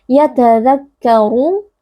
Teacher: Yatadhakkaru, ra huruf tebal dibaca dengan mengangkat pangkal lidah